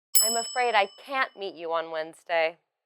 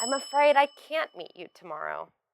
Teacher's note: in this sentence you put the stress on afraid can't meet and the time also you should say it with a falling intonation to show your regret let's look at these examples can we meet on Wednesday I'm afraid I can't meet you on Wednesday can we meet at 900 a.m.